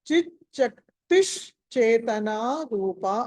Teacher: ఎక్కడైతే చిత్ శక్తి అని ఉందో ఆ విసర్గ స్థానంలో షకారం వస్తుంది కాబట్టి అది శకుంతల ష అది. కాబట్టి దీన్ని చిత్ శక్తిష్ చేతన రూప అని పలకాలి.